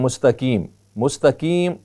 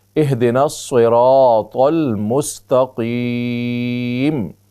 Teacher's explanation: چھوٹا کاف نہیں ہے بلکہ موٹا قاف ہے۔